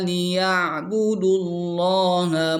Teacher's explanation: Ain ada sama dengan ha, ada di tengah tenggorokan.